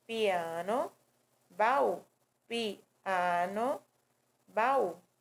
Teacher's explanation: E temos o hiato, que é o encontro de duas vogais, cada uma delas pertencendo a uma sílaba distinta, certo? Ou seja, é cada vogal em uma sílaba separada da outra